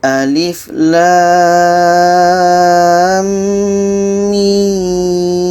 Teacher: Kita panjangkan 6 harkat, setelah itu dengung 2 harkat, setelah itu baru panjang lagi 6 harkat.